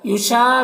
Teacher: یوشا میں الف مدہ ہے، ایک الف کے برابر کھینچیں گے۔